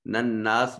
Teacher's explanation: نناس نون مشدد ہے غنہ واجب ہوگا